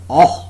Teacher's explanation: the back of the tongue is just below the half open position